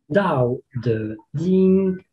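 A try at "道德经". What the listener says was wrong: Good, good.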